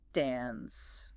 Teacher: American English pulls the tongue forward, shortens the vowel, and flattens it considerably.